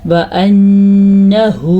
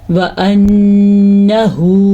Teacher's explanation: وَأَنَّهُ نون کے اوپر شد ہے تو نون کے اوپر غنہ ادا ہوگا